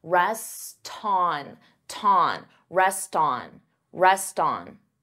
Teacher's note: here you hear that T because I'm linking the 2 words together and I'm transferring the T sound onto the vowel.